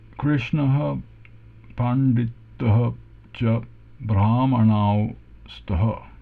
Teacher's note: retroflex N, retroflex D, but dental T, and Visarga